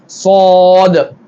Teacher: சாத் சப்தம் உள்ளேயே வாய்க்குள்ளேயே இருக்கிற மாதிரி வெளிய வரக்கூடாது